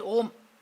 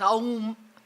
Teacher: So by Sandhi, A plus U will be O.